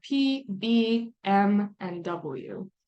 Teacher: little bit too by means two and lavial means lips so you use both of your lips you contact them together to shape that air flow when you make these types of sounds